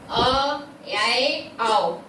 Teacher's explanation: अब आगे हम देखते हैं अर्ध विवृत स्वर। ऐसे स्वर जिनके उच्चारण में मुख द्वार आधा खुलता है उन्हें हम अर्ध विवृत स्वर कहते हैं